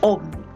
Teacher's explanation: Ómnibus es una palabra que es esdrújula porque tiene la mayor fuerza de voz en la antepenúltima sílaba.